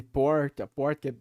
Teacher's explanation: aí tem a tendência do retroflexo em algumas zonas do Brasil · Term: R caipira